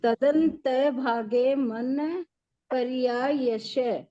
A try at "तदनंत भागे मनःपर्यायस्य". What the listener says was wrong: वापस बोलिए वो, तदनंत भागे है। तदंत नहीं है वो, तदनंत